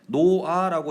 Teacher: 우리가 발음할 때 노아라고 히읗이 사라지죠